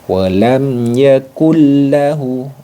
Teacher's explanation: dileburkan bunyi nun sukunnya tanpa didengungkan atau ditahan, tanpa ditahan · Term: idgham bila gunnah